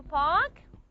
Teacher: There is an aspiration in park here.